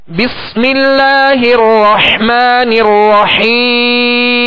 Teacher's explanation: جب اس کی حرکت پڑھیں گے تو اب 1 الف کی مقدار میں کھینچیں گے. جب وقف کریں گے تو اب سکون عارض پیدا ہو گیا، لہذا اب مد عارض ہوگی. اس کو 1 الف سے زائد اب کھینچ سکتے ہیں